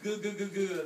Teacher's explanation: The back of my tongue is touching the top of my mouth. Gu gu gu. It's making a shape like this.